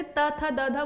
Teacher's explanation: दंत जब जैसे त थ द ध बोलो, ये दंत हो गया जहां आपकी जिह्वा दांतों से टकरा रही है